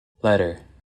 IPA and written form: ˈlɛtɚ (letter)